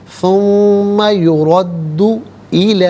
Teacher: را پر زبر ہے، را کو پر کر کے پڑھا جائے گا